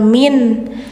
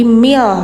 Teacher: ini jangan min tapi mil, langsung ke L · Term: Idgham bila gunnah